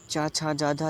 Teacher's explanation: जो चा और छा का उच्चारण स्थान होता है वो तालु होता है। · ये सारे जो वर्ड होते हैं उनका उच्चारण तालु से होता है।